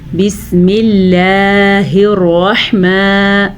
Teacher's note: बारीक रा और हा के मखरज का ध्यान रखना है